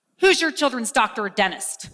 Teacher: The z sound becomes a j sound.